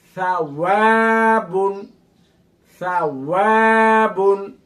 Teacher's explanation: ওয়াও মানে ঠোঁট গোল করে পড়তে হবে। ওয়ার উপরে জবর জের পেশ যাই থাকুক ঠোঁট গোল করে উচ্চারণ করতে হবে।